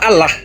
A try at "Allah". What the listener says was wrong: double. Bukan Allah. Jangan ditekan L-nya. Allah. Allah.